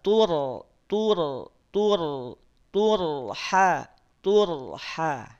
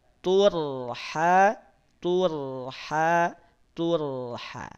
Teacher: ro sukun ini tebal Kenapa karena sebelumnya dia didahului oleh dah ro sukun kalau didahului oleh damah maka dia jadi tebal